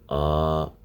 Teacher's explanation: تو یہ آ کرنے میں نے منہ کا کوئی بھی جز استعمال نہیں کیا سوائے اس کے کہ وہی خالی حصے سے آ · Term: حروف مدہ